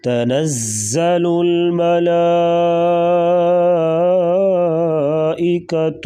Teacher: ملا ادھر مد جو ہے مد متصل ہے، اس کو مد لازم بھی کہتے ہیں، یعنی یہ مد لازمی طور پر کی جاتی ہے، 4 سے 5 الف کے برابر اس مد کو لمبا کیا جاتا ہے